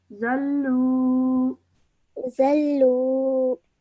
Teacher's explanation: waw madda needs to be stretched for 2 seconds as well